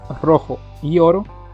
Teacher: Sin embargo, al analizarla, notamos que en las palabras rojo y oro, desde la sílaba tónica hacia el final, están exactamente las mismas vocales. En rojo, que empieza con la O y termina también con la O, como así en la palabra oro, que inicia con la O y termina también con la O.